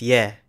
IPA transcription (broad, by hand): jɛ